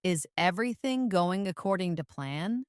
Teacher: Notice how the intonation rises at the end, signaling a question.